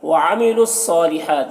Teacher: یہ واو، یہ دونوں الف اور یہ لام کو نہیں پڑھا جائے گا۔ صاد کو پر پڑھیں گے، یہ حروف مستعلیہ میں سے ہے